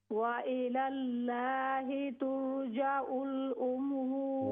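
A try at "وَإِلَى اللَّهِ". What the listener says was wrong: व इलल्लाहि, लफ्ज़ अल्लाह का लाम मोटा कर लें।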